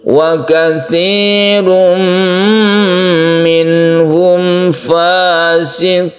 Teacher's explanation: Wa katsirum ini adalah tanwin bertemu dengan mim yang kita sebut dengan idgham bi gunnah